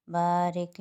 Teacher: بارک پہ با کے اوپر الف مدہ بن رہا ہے، ایک الف کی مقدار کھینچیں